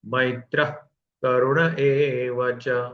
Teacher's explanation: जब हवा पूरी छोड़ देते हैं विसर्ग में तब वो ख के जैसे थोड़ा लगना चाहिए